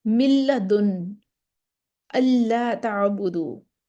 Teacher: نون کا لام، نون پڑھا ہی نہیں جائے گا، مکمل ادغام ہو گیا